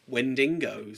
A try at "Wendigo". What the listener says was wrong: Yeah, there's no extra N in there.